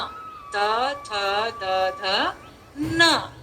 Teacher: जब हमने त बोला त जबान कहाँ टकराई, दांतों पे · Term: दंतव्य